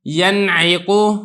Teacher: ینعقو، اب یہاں پہ دیکھیں نون ساکن کے بعد یہ عین حرف ہلکی آ گیا، تو آپ نے نون پر ایک تو غنہ نہیں کرنا، ینعقو، اور دوسرا نون کو خوب ظاہر کر کے پڑھنا ہے، نون کو چھپانا نہیں ہے۔ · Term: اظہار